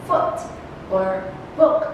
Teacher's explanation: it's pronounced with part of the tongue nearer to the center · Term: short oh